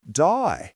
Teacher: In an Australian accent, they may say words like day more like die, giving words a slight twist.